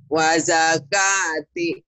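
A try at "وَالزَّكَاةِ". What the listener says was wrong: Ka-nya panjang. Itu mah patah di atas, di bawah mah kasroh.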